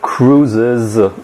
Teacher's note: cruises with also a voiced z that has a schwa before it